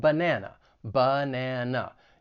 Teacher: the schwa sound, it is an unstressed vowel sound.